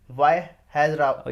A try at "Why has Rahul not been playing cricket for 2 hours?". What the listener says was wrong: इतना नहीं रुकना, वाई हैज राहुल, 3 चीजें